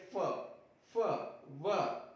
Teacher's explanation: तो हमारे जो नीचे वाला होठ है वह ऊपर वाले दांत को स्पर्श करेंगे तो दोनों की जो संधि होगी वह हो जाएगी दंतोष्ठ।